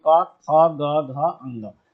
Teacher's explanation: क वर्ग का उच्चारण स्थान क्या होता है? तो आप बताएंगे कंठ होता है। पूरे क वर्ग का उच्चारण स्थान उसमें क, ख, ग, घ, ङ ये पांचों वर्ण आ जाते हैं।